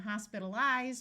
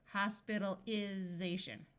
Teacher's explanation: Notice when we go from hospitalize with a long I, hospitalization with a short I.